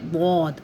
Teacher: दौद जो है ना हम लोग सही अदा नहीं कर रहे होते, हम इसको ज़ौद पढ़ते हैं। ज़ौद जो है ये हमारा उर्दू का लफ्ज़ है, लेकिन सिंधी उर्दू उसमें ज़ौद पढ़ते हैं, लेकिन इसको अरबी पढ़ते हैं दौद।